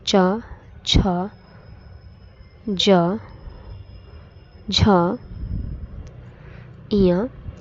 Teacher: तालु से उच्चारित होने वाली ध्वनियाँ हैं च वर्ग जैसे च, छ, ज, झ, इया।